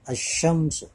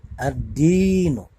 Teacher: Alif Lam Qomariah di mana dibaca jelas Alif lamnya kemudian kalau alif lam syamsiah itu adalah alif lam yang tidak dibaca jelas melebur pada huruf yang setelahnya